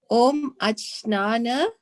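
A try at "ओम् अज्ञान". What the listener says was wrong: Actually, is Dhyan. J is G. You pronounce it as G. I know it's, I don't know why they put K, but anyway, it's Dhyan. Om Agyana.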